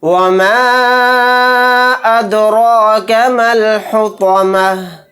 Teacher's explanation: इस मद को हम 3 अलिफ की मिक़दार खींच कर पढ़ेंगे। दाल के ऊपर जज़म है, यानी दाल साकिन है, तो यहाँ पर क़लक़ला करके पढ़ेंगे